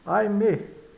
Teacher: o ai é seguido de consoante e soa um e aberto. É.